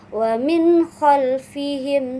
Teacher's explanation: Nah, contoh ee surah di dalam Al-Qur'an ee yang menggunakan sifat ee atau hukum huruf e izhar ini yaitu bismillahirrahmanirrahim wamin khalfihim sad dan di sana ada nun mati bertemu dengan kho sehingga dibaca jelas · Nun mati atau tanwin dibaca jelas tanpa dengung dan tidak terpengaruh sedikit pun oleh huruf setelahnya